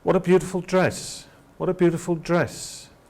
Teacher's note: we also use falling tones with exclamations what a beautiful dress what a beautiful dress again the pitch is downwards